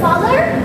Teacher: It's produced with the tongue relatively flat and low in the mouth and with the mouth open a little wider than for high vowels. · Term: low vowels